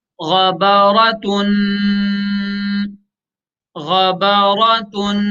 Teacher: पहला कलमा है गईन जबर ग, गईन जबर ग, बा जबर बा, गबा, रा जबर र, गबर, ता दो पेश तुन। तो तनवीन में गुन्ना भी करेंगे साथ साथ।